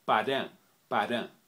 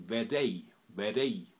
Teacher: a special sound for a kind of R which is between an R and a D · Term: special R